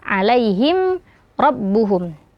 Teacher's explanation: Alaihim rabbuhum. Nah, ada mim sukun bertemu dengan huruf ro ya, itu juga hukumnya adalah izhar syafawi. Mimnya dibaca jelas